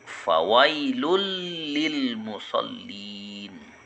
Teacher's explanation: Maka apabila bertemu nun mati atau tanwin dengan bertemu dengan huruf lam, maka suara tanwinnya atau nun matinya dimasukkan ke dalam huruf lam, maka dibaca jelas atau tidak dengung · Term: idgham bila ghunah, idgham bila gunnah